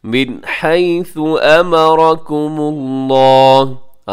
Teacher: मिन हैसु, आगे अमरकुमुल्लाह, अमरा इसमें रा मोटा है और आखिर में लफ्ज़ अल्लाह, इसे भी आपने मोटा पढ़ना है क्योंकि उससे पहले मीम के ऊपर पेश है।